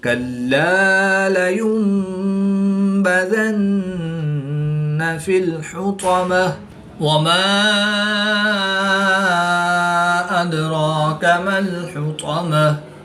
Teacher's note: گول تا کو وقف کی حالت میں ہاں ساکن سے تبدیل کر کے پڑھیں گے